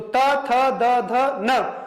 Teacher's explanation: तो जीभ का कहां स्पर्श हो रहा है? दांतों से। तो कौन सा हो गया स्थान? दंत्य।